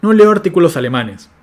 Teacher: con exactamente la misma entonación asignando el acento nuclear sobre la palabra alemanes